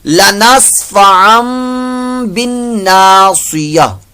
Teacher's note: ٹھیک ہے تو اس کو ایسے پڑھیں گے لنصف ام बिन नासिया, बा को नून से मिलाएंगे तो यहाँ नून मुशद्दद का गुन्ना भी और इसको लंबा भी करना है एक अलिफ से दो हरकत के बाद